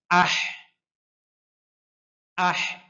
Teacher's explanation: হায়ের উচ্চারণটা কণ্ঠনালীর মধ্যখান থেকে হয়